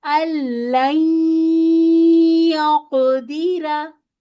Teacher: نون ساکن کے بعد یا ہے، تو نہ تو پوری طرح ادغام ہوتا ہے، نہ پوری طرح اظہار ہوتا ہے. اس کو ہم این والی آواز نکالتے ہیں.